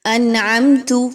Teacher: اب تا کے اوپر زبر ہے، ہم نے اس کو جب غلطی کی، لاحن جلی کی، یعنی بڑی مسٹیک، تو کیسے لوگ کرتے ہیں؟ انعمت، تا کی زبر کو تا کی پیش میں بدل دیا